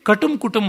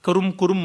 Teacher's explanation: ಇನ್ನು ಕರುಂ ಕುರುಂ ಅಂತ ಶಬ್ದ ಬರುತ್ತದಲ್ಲ, ಕಟುಂ ಕುಟುಂಬ ಅಂತಲ್ಲ, ಮೂರ್ಧನ್ಯಾಕ್ಷರ ಅಲ್ಲ, ದಂತ್ಯ ಅವರ್ಗೀಯ ರೇಫ